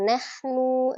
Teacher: Nah, tadi kan nahnunya satu kata bukan nahnu nazzalna gitu. Jangan menekan di huruf nunnya. Jadi langsung nahnu nyambung ya.